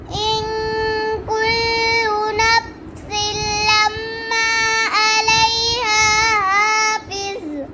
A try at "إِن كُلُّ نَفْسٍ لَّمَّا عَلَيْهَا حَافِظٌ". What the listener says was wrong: अपने लम्मा पर गुनाह नहीं किया दोबारा पढ़े इन मैं दोबारा पढ़ इन कुल्लु नफ्सिन लम्मा अलैहा हाफिज़